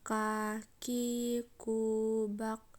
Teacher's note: Selanjutnya ka, yaitu menyentuhkan pangkal lisan dengan langit-langit bagian belakang di depan huruf ko, diucapkan dengan mengeluarkan udara dengan lembut. Kaki, kubak, ada nafas atau udara yang mengalir.